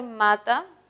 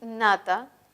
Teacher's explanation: Nasal bilabial ma versus la nasal alveolar na